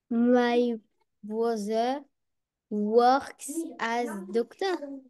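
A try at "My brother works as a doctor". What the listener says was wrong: Juste au niveau de la prononciation, my brother works as doctor. Donc pas prononcer le R. Enfin, essaie de pas le prononcer.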